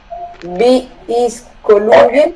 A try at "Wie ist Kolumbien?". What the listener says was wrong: Trata de pronunciar la W, no vi, sino ¿Wie ist Kolumbien?